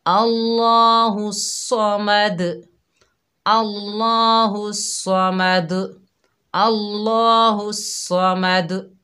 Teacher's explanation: तो हम सही कैसे पढ़ेंगे, अल्लाह के नाम को मोटा पढ़ेंगे, स्वाद को मोटा पढ़ेंगे, दाल पर कलकला करेंगे, यानी डबल साउंड आएगी, जुम्बश पैदा होगी